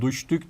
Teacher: buradaki düştük ifadesinde D'nin t'ye Şin etkisiyle dönüşmesi bize ünsüz sertleşmesini ya da diğer adıyla ünsüz benzeşmesi göstermekte